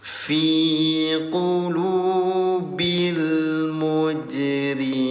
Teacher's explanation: Pantulkan jim dalam keadaan sukun, muj namanya qalqalah.